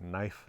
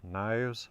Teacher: that's an F sound but it's a v between vowels like it is in the plural of those words